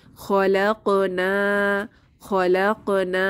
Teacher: আলিফ সুকুন না এখানে আলিফ মাদ এক আলিফ টেনে পড়বো